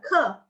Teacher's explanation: K dalam Pinyin dibacanya ke. Ada aspirasi.